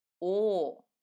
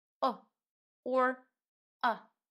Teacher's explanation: under stress we pronounce it as oh but without the stress we always pronounce it as a very neutral kind of sound